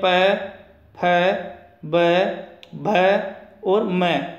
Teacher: इनका उच्चारण स्थान ओष्ठौ है। इस प्रकार ओष्ठौ यानी होठों के द्वारा उच्चारित वर्ण हुए